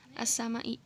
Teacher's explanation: al-nya tidak dibaca jelas karena di setelahnya adalah huruf idgham syamsiah